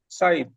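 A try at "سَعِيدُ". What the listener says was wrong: সাঈদু এক পেশ তো হরকত দিতে হবে।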